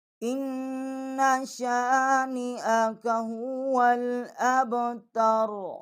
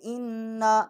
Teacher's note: اس کو غنہ کریں گے ایک الف جتنا، جیسے ہم لفظ کو کھینچتے ہیں اتنا اس کا غنہ ہوگا